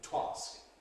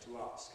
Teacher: You can’t say ‘to ask’ /twɑːsk/. You have to say ‘to ask’ /tu ˈɑːsk/